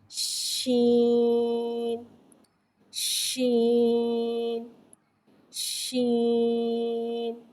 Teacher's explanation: شین کو ایک الف یعنی 3 حرکات کے برابر کھینچ کے پڑھیں گے۔ شین حرف شجریہ ہے، زبان کے درمیان اور تالوں کے درمیان سے ادا ہوتا ہے۔ شین میں تفشی والی سیٹی کو ظاہر کر کے پڑھتے ہیں، یعنی کہ اس میں شور کو ظاہر کر کے پڑھیں گے اور زیر کو نیچے گراتے ہوئے ادا کر کے پڑھیں گے شین شین شین۔